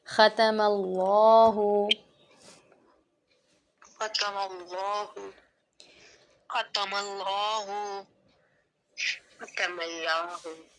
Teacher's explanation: यहाँ पे हम लाम को मोटा पढ़ेंगे क्योंकि अल्लाह के नाम से पहले ज़बर आ रहा है